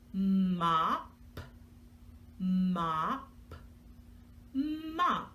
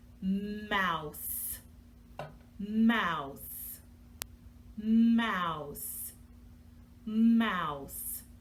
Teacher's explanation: a bilabial sound, meaning we use both of our lips and as a nasal sound because we make it with the sound coming through our nose